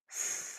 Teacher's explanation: F, another voiceless sound, no voice, only air.